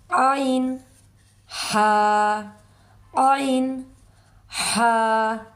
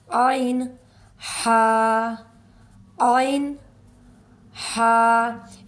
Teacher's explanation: हमजा हा इसी तरह आगे है आइन हा आइन हा ये जो आइन और हा है हरूफ हलकी में से ये रगड़ खाती हुई आवाज से अदा होंगे ये दरमियान वाले हलक से अदा होंगे आइन हा आइन हा यूं ही इसके लिए हम मुंह खोलेंगे मुंह खोलते ही मुंह जो है ना जुबान पीछे हलक की तरफ ले जाते हुए मजबूती से यह दोनों हरफ अदा होते हैं